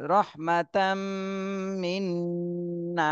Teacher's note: এখানে দুইটা গুন্না হবে মিমেও গুন্না করতে হবে নুনেও গুন্না করতে হবে